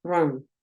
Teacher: la U es entre una O y una A